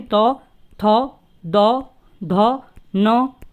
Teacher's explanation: जो तौ वर्ग होता है, वो क्या होता है, दांतों की सहायता से बोला जाए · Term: दंत्य वर्ण